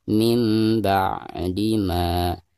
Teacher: Perhatikan ada nun sukun berhadapan dengan huruf ba, maka dihukumi bacaan iklab. Jadi cara membacanya suara nun sukun tersebut itu berubah menjadi mim sukun